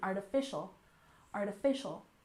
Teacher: with a stress here on the third syllable in artificial